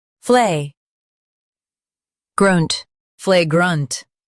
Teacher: Emphasize flay and soften grunt.